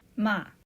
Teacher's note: And finally, a sharp falling tone like you're giving a command.